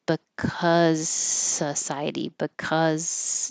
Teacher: And this is because by itself we would make a Z, but because the next word is a voiceless S society, I'm going to stop my voicing early and just skip the Z.